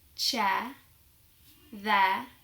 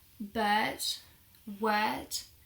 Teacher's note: As you can probably tell, the R sound is almost silent.